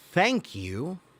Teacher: thank you is unvoiced th there's no buzzing there's no humming sound